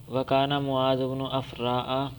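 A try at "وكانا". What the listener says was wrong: لمبا تو پھر پڑھے نا، الف پڑھے.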